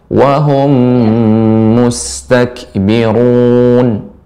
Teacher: Wahum, ini dipanjangkan gunnahnya.